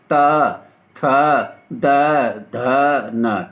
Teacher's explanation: ता वर्ग क्या है, ये ता वर्ग दांतों के बीच से बोला जाता है, इसलिए इसे दंतव्य कहते हैं